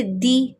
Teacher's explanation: وہی ای کی ساؤنڈ میں پڑھیں گے، دے نہیں دی · اہدنس حمزہ کے نیچے زیر ہے، ہا ساکن ہے، حمزہ کو ہا سے ملا دیں گے اور زیر کو کسرہ کو باریک پڑھیں گے ای کی ساؤنڈ میں